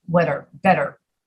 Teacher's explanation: We don't say better like the British, we say better. We pronounce it like a double D